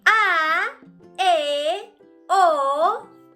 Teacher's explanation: al momento de pronunciarlas abrimos un poco más la boca que cuando pronunciamos las vocales cerradas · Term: vocales abiertas